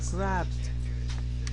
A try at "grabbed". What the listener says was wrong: make sure you pronounce that as a d not a t so pronounce it with a little more D